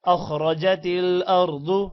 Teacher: ضاد کو موٹا کریں گے، را کو بھی موٹا کریں گے